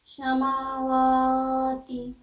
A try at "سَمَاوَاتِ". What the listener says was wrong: میم پہ بھی منہ کھولنا ہے۔